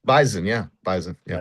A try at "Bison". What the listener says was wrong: Not Bison. You have to put a C in there.